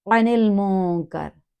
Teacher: عن المنکر، حرف آئین کو گلے سے ادا کرتے ہوئے، نون کو لام سے معروف ملاتے ہوئے، آگے میم کو معروف پڑھتے ہوئے، نون ساکن پہ غنہ بنتا ہے کیونکہ یہاں تجوید کا رول ہے، نون ساکن کے بعد اخفا 15 لیٹر ہے جس میں حرف کاف آ گیا، کاف کتاب والا، کلکلا نہیں ہے۔